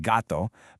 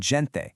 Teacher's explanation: It's a hard G before A, O, or U, like in gatto, but it becomes a soft J sound before E or I, like in gente.